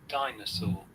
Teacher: Okay, and amazing part of this word, you have noticed there is R. In British English, we do not pronounce R.